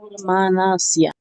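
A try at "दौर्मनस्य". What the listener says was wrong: Not Manasya, no. Manasya is all the same weight. But the first one is held for 2 beats. Daurmanasya.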